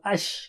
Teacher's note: تفشی شین میں ہے آواز کا پھیلنا، یاد رکھیے شین کو زبان کی نوک میں زبان کے بیچ سے کرتے ہیں تو اش کریں گے تو آپ آواز پھیلے گی.